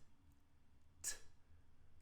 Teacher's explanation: in order to make that sound, I do have to put my tongue up behind my teeth and stop the air. I do release it. · I'm not using my vocal cords to make this sound. So, T is partially blocked and it's unvoiced.